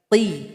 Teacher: Huruf qaf keluar dari pangkal lidah, namun suara harus dinaikkan ke langit-langit. Ti, tidak boleh ki seperti huruf kaf, salah.